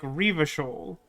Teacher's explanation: The little pronunciation guide that I cited at the start of the stream suggested that you were supposed to put more emphasis on the first syllable